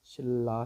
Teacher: 니은이 리을을 만났는데 리을로 발음되는 현상이야. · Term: 유음화